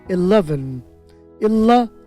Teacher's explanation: 11, 3টা সিলেবল, 11, লতে জোর হবে 11